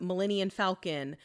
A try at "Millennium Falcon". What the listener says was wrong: What are you saying? Say it one more time. Are you putting an N on the end? You're saying Millennium. Millennial Falcon?